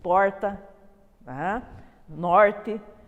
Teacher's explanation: é marcada por essa pronúncia retroflexa do R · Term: R caipira